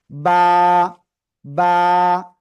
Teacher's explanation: কোন টান নাই এটা মনে রাখবেন এই অক্ষরটার নাম হলো বা দুই ঠোঁটের ভিজো অংশ থেকে এক আলিফটা নিয়ে স্বাভাবিকভাবে উচ্চারণ করতে হবে